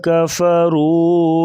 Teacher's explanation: کفروا را کے اوپر پیش ہے تو را کو موٹا کریں گے، واو مدہ ہے اسے تھوڑا سا لمبا کریں گے 1 الف کے برابر